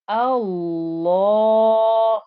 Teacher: Lam is not a thick, heavy letter in general, but here in this word it becomes heavy. And also you can hear that there is a 2-count stretch in this word. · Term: thick and heavy